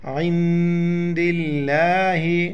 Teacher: لفظ اللہ سے پہلے زیر ہے، لفظ اللہ کو باریک پڑھیں گے